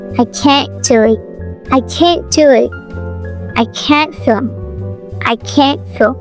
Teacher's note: The T in can't often disappears. In faster speech, the T in can't is frequently either glottalized or unreleased.